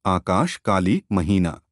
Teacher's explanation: यह विवृत पश्च स्वर है। प्रधान स्वर अ से बहुत मिलता जुलता है। इसके उच्चारण में जिह्वा नीचे की ओर तथा होंठ चारों ओर फैल जाते हैं।